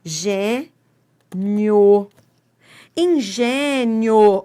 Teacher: Semivogal, que é o som de I, mais vogal. Eu tenho um ditongo.